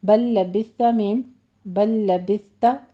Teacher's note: بل لبثت لام ادغام ہو رہا ہے دونوں لام کا